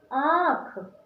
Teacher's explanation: सानुनासिक यानी आपका मुंह के साथ साथ हवा कहाँ से निकलेगी? नाक से।